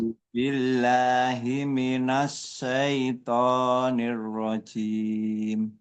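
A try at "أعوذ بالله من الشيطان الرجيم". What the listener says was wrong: Huruf sya sedikit lebih di apa? Sya itu tafashi. Jadi desisnya itu lebih lebar, ya, lebih lebar, menyebar. Minasyai syaito syaito. Jangan ditahan. Kalau ditahan jadinya syaito antara sa dengan sya, tengah-tengah, ndak.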